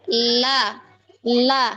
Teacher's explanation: Kalau kita lihat sifatnya, huruf lam ini dia termasuk huruf jahar ya, aliran nafas tertahan. Sebagian besarnya tertahan ya, la, nggak ada hembusan apa dari dalam yang apa hembusan angin yang kedorong.